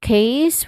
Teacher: case, which has a diphthong sound A in the middle.